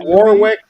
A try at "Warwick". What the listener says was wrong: it's actually pronounced as Warwick. You don't pronounce the second W.